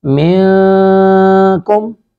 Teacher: لِوَجْهِ اللَّهِ لَا نُرِيدُ مِنْكُمْ، من نون ساکن کے بعد کاف ہے، یہاں پہ اخفا کریں گے، یعنی ناک میں آواز کو چھپائیں گے